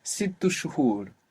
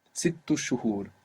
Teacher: If I say it faster, maybe I will say sittu shuhur, and the helping vowel I put there is u.